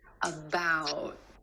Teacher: Instead of that true T at the end, most Americans are going to hold that T, about. My tongue tip goes to the ridge behind my teeth and just stays there. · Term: held T